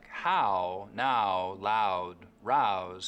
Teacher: In words like how, now, loud, rouse, Canadians still use that wide ow diphthong.